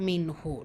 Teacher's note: நூன் சுக்கூனுக்கு அப்புறமா ஹா வந்திருக்கு. இது ஹார் உள்ளது உள்ள மாதிரி ஓதணும், குன்னா செய்யக்கூடாது